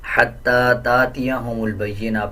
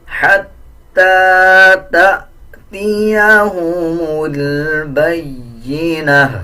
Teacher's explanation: اب جیسے الف کے اوپر جزم ہے تو اس کو جھٹکے کے ساتھ ادا کیا جائے گا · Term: جھٹکے والا حمزہ